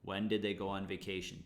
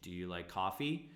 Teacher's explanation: information question falling yes no question Rising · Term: intonation